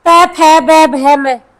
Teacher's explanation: अब आ गया ओष्ठ, प फ ब भ म, होठ आपस में स्पर्श कर रहे हैं